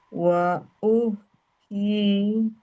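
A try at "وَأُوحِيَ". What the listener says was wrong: H-nya ngalirnya ditipisin. Langsung senyum. Kurang ngalir, Bu.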